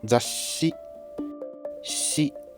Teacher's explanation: what's been stretched here is the consonant part of shi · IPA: ɕ